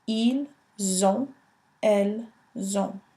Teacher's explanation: you will see the S creating the Z sound in the O-N-T.